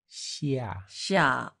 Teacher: Yeah, and 下, X, 西, 西, 西, 呀. 下 下 all the way down is a falling tone